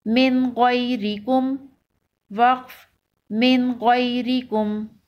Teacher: نون ساکن کے بعد یہاں پر بھی حروف حلقی ہے تو غنہ نہیں ہوگا